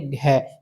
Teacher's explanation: तो घ आपका कंठ से उच्चारित होगा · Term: कंठ्य वर्ण